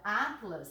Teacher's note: Ao dividir as sílabas da palavra atlas, repara, a sílaba forte é a penúltima. Se é a penúltima, ela também é uma paroxítona, terminada em A seguida de S.